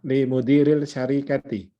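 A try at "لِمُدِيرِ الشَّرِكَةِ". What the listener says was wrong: Iya, tapi itu shin itu huruf syamsiyah ya. lamnya tidak usah dibaca. Iya li mudirish syarikati. Syarikati itu ya bacanya nggak ada panjang pendeknya gitu. Jadi syarikati gitu. Nah ini ya ini syarikati ti-nya karena dia mudhof ilaih, sedangkan roknya itu kasroh karena ada lam. Limudirish. Nah, ini jadi seolah-olah di sini biasanya dikasih tanwin gini, sebetulnya enggak ya. Karena dia huruf syamsiah. Limudirish syarikati.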